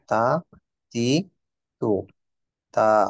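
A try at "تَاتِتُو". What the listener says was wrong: টিটা লম্বা হয়ে গেছে একটু। তা তি টু। টু। টু লম্বা একটু।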